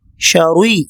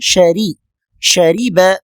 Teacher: ஷரி ராவை இங்கு மெல்லினமாகத்தான் சொல்ல வேண்டும் வல்லினமாக சொல்லக்கூடாது